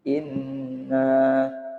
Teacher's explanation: Nah, nun tasdidnya ini adalah bacaan gunnah. Gunnah artinya dengung. Qaidahnya gunnah, setiap nun dan mim yang bertasdid.